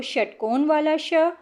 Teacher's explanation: श षट्कोण वाला वो मूर्धा को स्पर्श करती है।